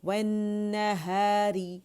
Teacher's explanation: वन्नहारी, री के नीचे जो है र के नीचे कसरा बारीक पड़ी जाएगी, ठीक है, मुरक्कक पड़ी जाएगी, यानी ज़बान की जड़ नीचे रहेगी, ज़बान फ्लैट नीचे लेटेगी अपने लोअर जॉ पर, ठीक है. वो इसका फ़र्श वहाँ नीचे होगी, रेज़ नहीं करेंगे उसे, ठीक है.